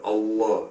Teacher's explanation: The difference is mainly the elongation of the L.